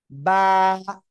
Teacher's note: দুই ঠোঁটের ভিজা অংশ থেকে বা উচ্চারিত হয়